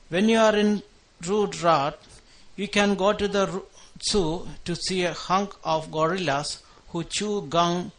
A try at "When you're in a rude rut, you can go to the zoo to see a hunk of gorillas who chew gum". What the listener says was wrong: Okay, some trouble again with your pausing and with the R sounds and with the W sound. When, rude, rut. When you're in a rude rut, you can go to the zoo to see a hunk of gorillas who chew gum and eat guk.